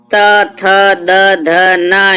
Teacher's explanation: ये दांतों से उच्चारित होते हैं